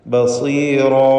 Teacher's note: റാഇനും അതിൻ്റെ ദീർഘാക്ഷരമായ അലിഫിനും പൂർണ്ണമായ തഫ്ഖീം കൊടുക്കുക, തടിപ്പിക്കുക